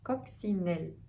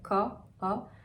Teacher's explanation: Ok, un O très ouvert.